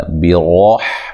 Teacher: را کو موٹا ادا کرنا ہے، ہا کو واضح نکالنا ہے